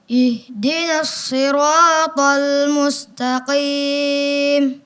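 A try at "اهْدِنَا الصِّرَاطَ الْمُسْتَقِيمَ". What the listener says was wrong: Iya, ihdinas-si. Ya, kalau bisa ditekan lagi bunyinya karena ada tasydid. Ihdinas-si.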